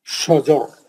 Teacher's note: پتلا نہیں کریں گے را کو موٹا پڑیں گے